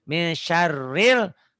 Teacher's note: Min jadi ming. Ini nun mati ketemu syin jadi ikhfa. Min syarril alif lam qamariyah.